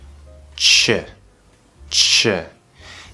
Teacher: We need a nice good close, like you're gonna t, but instead of pushing out t, what you're gonna do is you're going to push the SH sound sh through the T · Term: CH sound